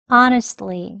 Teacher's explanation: 끝부분을 보시면요. 이 트 소리를 아예 하지 않고요.